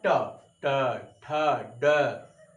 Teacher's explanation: आपकी जीभ जो है मूर्धा हो जाती है, मुड़ जाती है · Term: मूर्धन्य व्यंजन